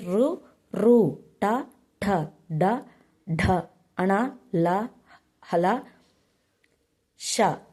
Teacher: నోటి పై భాగం నుండి పుట్టే అక్షరాలని మూర్ధన్యములు అంటారు